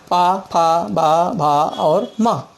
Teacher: ओंठों के खुलने और बंद होने से पा वर्ग निकलता है